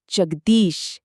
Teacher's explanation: जब जगत और ईश मिलते हैं तो त और ई मिलकर दी बन जाते हैं। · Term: संधि